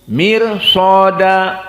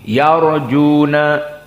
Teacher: Roknya muraqqaqah, mirsada. Yarjuna tafkhim, yarjuna.